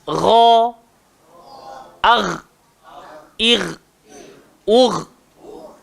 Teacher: Ghain pun keluar dekat tekak juga, tapi dia bahagian paling atas. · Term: huruf ghain